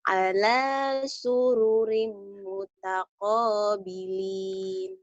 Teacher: rimnya ditahan karena jadi idgham biguna. Idgham biguna itu berarti ada dengungnya, ditahan dan dengung.